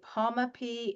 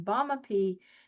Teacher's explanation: One is voiced and one you feel air on your hand, and the other one you don't. On the P sound, you really feel the air, while the B you don't.